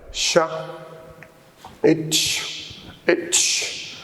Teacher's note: When I say itch, you will feel that the front of the tongue touches the area next to the alveolar ridge, or I would say the beginning of the hard palate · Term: belated alveolars